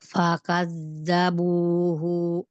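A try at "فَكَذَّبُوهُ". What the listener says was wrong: Bukan fakaz. Fakaz. Coba lihat hurufnya. Fakadzabuhu. Fakadzabuhu. Bukan zabu. Bukan zabu. Bukan zabu. Tapi zabu. Ujung lidahnya keluarin sedikit. Fakadzabu.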